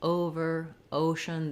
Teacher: Over, ocean, the O is long and it's held longer.